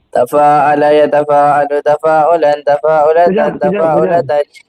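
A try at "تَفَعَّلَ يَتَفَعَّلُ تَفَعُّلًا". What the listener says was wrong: Bukan tafa'ala yang panjang tapi yang pakai sabdu. Tafa'ala yatafa'alu.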